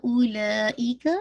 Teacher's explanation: मद्दुल वाजिब मुत्तसिल है, 4 to 5 काउंट आप इसको स्ट्रेच करेंगे